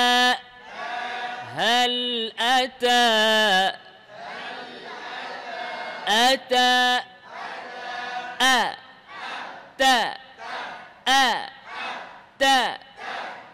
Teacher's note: তা যখন মুতাহারিক হবে খেয়াল করেন তখন একেবারে অল্প বাতাস বের হবে যেটা শুধু আপনি উপলব্ধি করতে পারবেন এভাবে বলবেন না হাল আতা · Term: হামসের হরফ